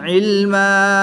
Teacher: 2 زبر کی تنوین کو وقف میں الف مدہ سے تبدیل کر کے پڑھیں گے